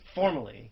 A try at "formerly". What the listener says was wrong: When people say formally instead of formerly, do you lose your mind? Well, when you're saying something is former. Like, Caitlyn Jenner, formerly Bruce Jenner.